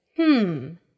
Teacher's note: notice that there is no vowel in the syllable so you have to really stress the m sound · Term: fourth tone